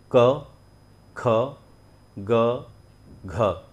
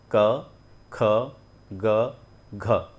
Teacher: आपको सिर्फ और सिर्फ कंठ का इस्तेमाल करना है